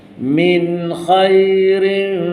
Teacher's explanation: Min tak dengung, khairin tanwin jumpa fa lagi. Dengungkan juga.